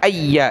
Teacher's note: یا کے اوپر تشدید سختی کے ساتھ پڑھیں گے. ایدک ایا دال زبر دا، کاف زبر کا، دک.